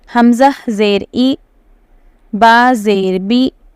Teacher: تو اے عربک میں اے ہوتا ہی نہیں ہے نا، ای ہوتا ہے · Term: معروف